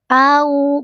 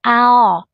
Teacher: fathah berjumpa dengan wau sukun harfulin ayunkan dengan lembut au bukan ao